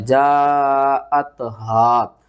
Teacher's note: جیم الف مد زبر جا، حمزہ تا زبر ات، جاءت، ہا الف زبر ہا، جاءت، ہا مد متصل ہے، 5 الف کے برابر کھینچنا ہے، اور ہا کو آپ نے حلقے سب سے نیچے والے حصے سے ادا کرنا ہے۔